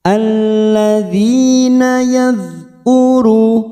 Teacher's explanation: Dzal sukun bukan qalqalah kita tahan. Yadhkuru dema bertemu wawu sukun 2 harokat.